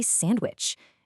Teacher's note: I mean, sure, you can say sandwich, and it's not wrong, but in natural, fast conversation, that D just vanishes